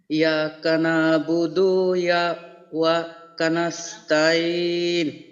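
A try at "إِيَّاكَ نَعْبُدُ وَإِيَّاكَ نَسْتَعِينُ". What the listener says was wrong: হ্যাঁ হ্যাঁ এই যে ইয়াতে যেহেতু তাসদিদ আছে আমরা জানি ইয়া উচ্চারণটা দুইবার হবে, তাহলে হামজে ইয়াজের ই, ইয়া আলিফ জবর ইয়া, ইয়া কাব জবর কা, তাহলে ইয়াকা না'বুদু ইয়াকা নাস্তাঈন। শুনুন ভাই, হামজে ইয়াজের ই, হামজে ইয়াজের ই, ইয়া আলিফ জবর ইয়া, তাহলে ই ইয়া, ই ইয়া।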